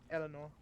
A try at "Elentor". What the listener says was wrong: I'm pretty sure there's a T in there. Elentor. Elentor, right there. Elentor.